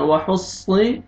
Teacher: صاد موٹا پڑھنا ہے، وحصی سین وحصی نہیں پڑھنا، وحصل. الف سے پہلے زبر ہے، میم کو آپ نے کھینچنا ہے، فا کو صاد شد کے ساتھ ملانا ہے، فص اور صاد کو موٹا کر کے پڑھیں گے، فص.